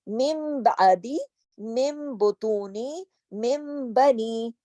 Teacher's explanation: مم بعدی، مم کیوں پڑھا؟ نون کے بعد با آ گیا، اس وجہ سے من نہیں، مم